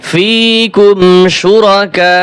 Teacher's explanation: চার আলিফ টান দিয়ে শেষে শক্ত করতে হবে হামজার উচ্চারণটা শুধু শক্ত করলে আদায় হবে